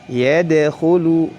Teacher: Wa ra'aitan nasa yadkhulu, yad dal memantul karena memiliki sifat qalqalah. Yadkhulu, lunya panjang 2 harakat karena di situ terdapat waw sukun sebelumnya dhammah